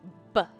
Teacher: You have to release. You have to let your lips go B. That's when the sound comes out. B. And what's happening before that is you're increasing the pressure, the air pressure behind your lips. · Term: stop